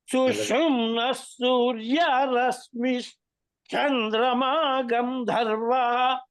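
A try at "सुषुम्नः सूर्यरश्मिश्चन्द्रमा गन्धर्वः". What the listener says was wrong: రశ్మి కింద కలుపుతున్నారు మీరు సూర్యరశ్మి చంద్రమా గంధర్వా సూర్యరశ్మి చంద్రమా సూర్యరశ్మి కింద కలుపుతున్నారు అది మధ్యగా చెప్పాలి సూర్యరశ్మి చంద్రమా గంధర్వా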